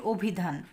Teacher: আমি এখানে লিখেছি অভিধান আমরা কিন্তু বলি অভিধান অভিধান বলি না অ এর মত উচ্চারণ করি না অনেকটা ও এর মত উচ্চারণ করি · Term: সংবৃত উচ্চারণ